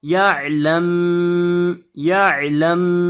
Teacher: یہاں میم کے اوپر آپ نے اس کی آواز کو ناک میں لے جا کر پڑھنا ہے